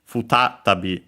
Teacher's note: Notice, by the way, also the u of the fu barely heard